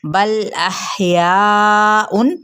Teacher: बल अहयाउन, लाम को हमने हिलाना नहीं है, यहाँ पे हा पे हम्स करना है और यह हरूफ हल्की में से भी है और या को चार हरकत लंबा करेंगे और उन पे इजहार यानी तनवीन पेश पे इजहार का कायदा।